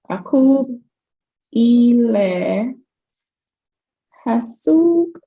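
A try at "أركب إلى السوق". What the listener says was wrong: Right.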